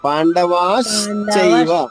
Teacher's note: పాండవాష్ అక్కడ మూసేయాలి. పాండవాష్ అన్నప్పుడు కొంచెం గాలి వెళ్తుంది నాలికకి అంగిలికి మధ్యలో. కొంచెం గాలి వెళ్ళనిచ్చి మూసేయాలి.